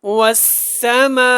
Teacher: یہ جو ہے مد متصل ہے، آپ 4 الف سے زیادہ کھینچیں لیکن 4 تک لازمی اس کو کھینچیں. وسا اچھی طرح آپ نے لائیں، وسما نہیں پڑھنا، وسما ایسے پڑھنا مجہول ہے.